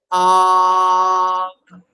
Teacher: আ ধ্বনি উচ্চারণ করার সময় আমাদের জীব একেবারে নিচের চোয়ালের সঙ্গে শোয়ানো থাকে মিশে থাকে মিশে থাকে কারণ স্বরধ্বনি উচ্চারণ সম্পূর্ণটা নির্ভর করে জীভের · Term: নিম্নস্বর